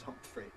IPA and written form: ˈhʌmpfri (Humphery)